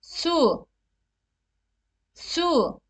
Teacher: ötre ince sesli harfleri ü ile u arası bir ses tonunda okutur bu ses tonu dudaklar fazla büzülmeden verilmeye çalışılmalıdır